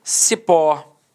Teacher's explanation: Repare que a sílaba tônica é a última e ela é terminada em O.